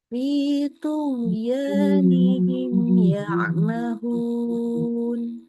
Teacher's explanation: Bertemu dengan huruf ya, maka mimnya dibaca jelas. Seluruh sifatnya mim jelas. Kita nggak menambahkan gunnah di sana. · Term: izhar syafawi